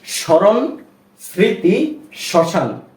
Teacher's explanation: আমরা স্মরণ এভাবে পড়েছি কিন্তু ম এর কোন উচ্চারণ আসেনি কেননা যদি কোন শব্দের প্রথম বর্ণের সাথে ম ফলা যুক্ত হয় সেক্ষেত্রে সেই ম ফলার উচ্চারণটা হয় না সেইভাবেই বা ওই নিয়মেই এই যে স্মৃতি এখানেও শব্দের প্রথমেই ম